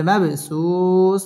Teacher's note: বা কলকলার হরফ ধাক্কা দিয়ে পড়তে হবে